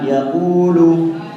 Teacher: Kemudian ayat yang ke-6, kalimat yaqulu, di situ tidak ada gunnah, ya, tidak boleh ada gunnah, tidak boleh ada suara yang keluar dari hidung